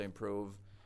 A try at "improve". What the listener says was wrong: And also on that improve, something funny with the vowels going Improve. I'm kind of hearing oh, but I want improve. Ooh, improve. And again, like I'm sure there are some variations of English, of American English, where that would be fine.